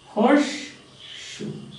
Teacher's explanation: So in this case, alveolar fricative has become palato alveolar fricative. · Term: assimilation